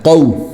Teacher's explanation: قوف جو ہے وہ ہم عام جو کاف نکالتے ہیں اس سے موٹا ہوتا ہے، ٹھیک ہے، تو اس کو کو نہیں بولنا کو بلکہ موٹا نکالنا ہے، قو۔